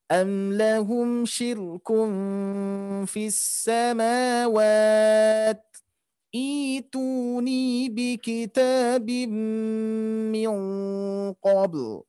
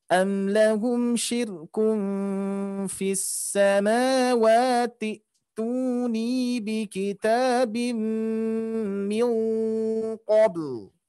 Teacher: kalau misalkan diwasolkan, berarti hamzah wasol itu tidak akan dibaca atau tidak dilafalkan